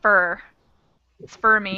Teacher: squished together. It sounds more like a schwa, so it's more of that it's for rather than o, not for, but fur.